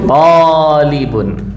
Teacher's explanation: Tullabun menjadi talibun, tonya panjang.